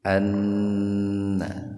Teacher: nun bertasdid itu dibacanya gunnah, mendengung, tahan dua ketukan